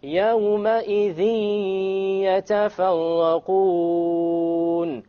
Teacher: You notice the dhi. There's a ghunnah. Okay, and there is no clear end sound.